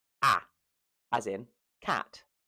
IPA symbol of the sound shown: æ